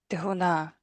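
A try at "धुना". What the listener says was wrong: All right, get the longs and shorts a little better.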